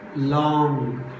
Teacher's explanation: we should not pronounce ga sound. Simply we should call long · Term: Nasal sound